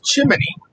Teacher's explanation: It's not chimney. There's no vowel in between the chim and the knee.